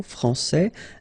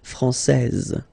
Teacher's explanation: here you get this final S that you don't pronounce